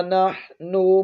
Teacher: ہا کو ہلکے درمیانی حصے سے ادا کریں گے